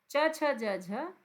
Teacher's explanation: च छ ज झ तालव्य है